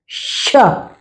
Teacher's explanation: षटकोण वाला श होता है वह हम मूर्धा से बोलते हैं